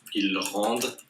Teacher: And when it's a verb and it's il, we don't pronounce like that. We don't pronounce the ENT, we just pronounce the E.